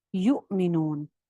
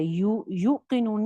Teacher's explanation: یؤمنون میں کیا ہو رہا ہے, واؤ کے اوپر آپ کو حمزہ نظر آ رہا ہے جو کہ ساکن ہے, تو ہم بیسکلی یا پیش حمزہ پڑھ رہے ہیں یؤمنون, جبکہ یوقنون میں یا پیش واؤ, یو کیا ہے, واؤ مدہ, اس کو ہم جھٹکے سے نہیں پڑھ رہے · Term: حمزہ ساکنہ